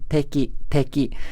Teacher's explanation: in the Japanese T, the tip of the tongue is touching the back of the upper front teeth, and the blade of the tongue is touching the alveolar ridge. This is different from the English T, in which only the tip of the tongue is touching the alveolar ridge, at least in American English.